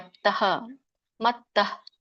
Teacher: ಇಲ್ಲಿ ನೋಡಿ ಉಚ್ಚಾರಣೆ ಮತ್ತಃ. ಸೊ ವಿಸರ್ಗ ಇರೋದ್ರಿಂದ ಸ್ವಲ್ಪವಾಗಿ ಹ ಉಚ್ಚಾರಣೆ ಮಾಡ್ಬೇಕು